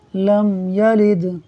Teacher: میم ساکن کے بعد یا حرف با اور میم کے علاوہ ہے، لہٰذا اظہار شفوی ہوگا، یعنی غنہ نہیں کریں گے